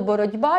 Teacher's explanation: Наприклад, слово «боротьба», як ми бачимо, звук «т» уподібнюється до звуку «д»